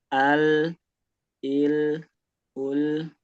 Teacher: Dia mengalir tapi tidak sempurna ya. Dia juga bukan yang disentak walaupun bukan walaupun tidak sempurna tapi dia tetap ada alirannya ya.